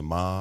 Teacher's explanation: so ma flat is the first tone. The second tone is rising ma, like you're asking a question.